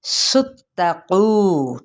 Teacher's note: سین کی پیش کو تا کے ساتھ ملائیں گے